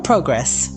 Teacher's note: The noun progress, pronounced with the stress on the first syllable